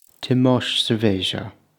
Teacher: the ending sh sound in Portuguese, which you get a lot in southern Welsh dialects